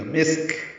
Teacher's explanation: سین ساکن کاف ساکن دونوں پہ ہمس ہوگا. ملانے کی صورت میں مسکون ادغام ناقص مع الغنہ کرنا ہوگا.